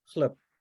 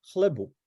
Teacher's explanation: That B there at the first word is actually pronounced as a P, right? It's devoiced.